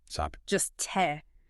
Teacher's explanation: after an initial S like in stop the t is usually unaspirated